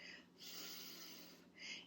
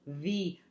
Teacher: if I turn my voice on it says V